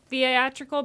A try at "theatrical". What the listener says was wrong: so theatrical you pronounce the A.